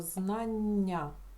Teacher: Ми чуємо один один м'який подовжений звук